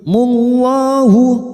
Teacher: lam jalalah yang didahului dumah kita baca tafkhim